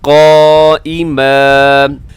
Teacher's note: ज़बर ज़ेर पेश पे वक़फ़ हो तो उसको साकिन करते हैं, दो पेश पे हो, दो ज़ेर पे हो तो उसको साकिन करते हैं, और दो ज़बर भी वक़फ़ हो तो उसको अलिफ की तरह खींच के लंबा करके पढ़ा जाता है